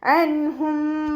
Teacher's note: അൻഹും. ഇവിടെ നൂൻ സാക്കിനയ്ക്ക് ശേഷം ഇദ്ഹാറിൻ്റെ അക്ഷരമായിട്ടുള്ള ഹ വന്നു, അപ്പോൾ നമ്മൾ നൂൻ സാക്കിനയെ വ്യക്തമാക്കിയിട്ട് ഉച്ചരിക്കുക കേട്ടോ. ഇദ്ഹാർ ചെയ്തിട്ട് ഉച്ചരിക്കുക.